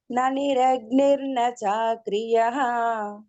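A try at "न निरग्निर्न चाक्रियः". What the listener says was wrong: అంటే లాస్ట్ చివర్ అక్షరాల్ని కొంచెం సాగదీస్తున్నారు ఇది వేరే మన ట్యూన్ ఫాలో అవ్వండి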